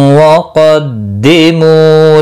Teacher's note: क़ाफ़ मुस्तालिया है, पुर पढ़ा जाएगा। मुँह वाव मद्दा है, 1 अलिफ के बराबर खींच कर पढ़ेंगे।